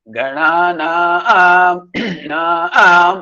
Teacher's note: Ga is Anudattam because it's going down. Na is Udattam, flat. Naam is Dirgha Swaritam, elongated, up, going up.